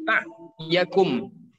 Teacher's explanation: Nah, kalau ain ini di tengah ya, bukan di hidung. Kadang orang keliru ke hidung perginya.